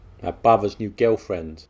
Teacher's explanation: The final L becomes a W, my brother's new girlfriend.